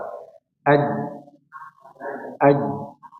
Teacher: Tapi kalau huruf jim sama sekali tidak ada aliran nafas yang keluar. Ya. Karena dia rata, permukaannya rata.